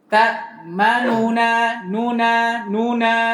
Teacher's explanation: Tasydid dilepas, kemudian nun pertama dibaca sepertiga harakat.